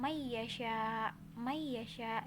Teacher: ada nun mati bertemu dengan Ya jadi Meisya dileburkan Bukan dibaca man-yik tapi Meisya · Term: Bighunnah